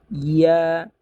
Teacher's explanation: তারপরে ইয়া, ইয়া হচ্ছে শক্ত হরফ, 6 নম্বর মাখরাজ থেকে উচ্চারণ হয়। জিহ্বার মধ্যখান তার বরাবর উপরে তার সঙ্গে লাগিয়ে ইয়া